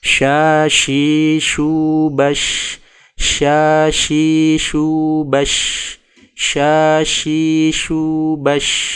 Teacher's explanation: pengucapan huruf Syin juga memiliki ciri khas tafashshi, yaitu udara menyebar di dalam mulut saat mengucapkan huruf tersebut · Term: tafasyi